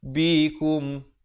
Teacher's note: Bunyi nun kepada bunyi mim yang nipis. Bibirnya dibiarkan renggang sedikit. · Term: hukum iqlab